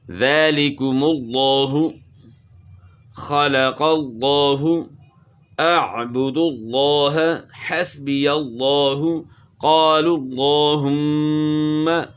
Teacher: لفظ اللہ کے لام سے پہلے پیش ہو تو پھر بھی آپ نے اس کو موٹا پڑھنا ہے